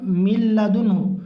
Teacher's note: نون کی آواز کو ایک دم سے حذف کر دیں گے، ایک دم سے غائب کر دیں گے۔ ٹھیک ہے، اس کو ادغام تام کہتے ہیں۔